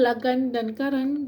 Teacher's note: keduanya diakhiri dengan konsonan nasal uvula bersuara N. Cara penghasilannya ialah dengan merapatkan hujung lidah pada uvula untuk membuat sekatan pada aliran udara yang keluar daripada paru-paru ke rongga mulut.